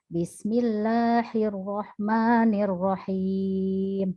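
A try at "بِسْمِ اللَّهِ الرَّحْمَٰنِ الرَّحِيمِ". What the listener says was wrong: Oke, tadi ketukar haknya.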